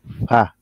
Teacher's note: উপরের দাঁতটা ওই যে ঠোঁটের সাথে একটু লাইগা একটু বাতাস বের হবে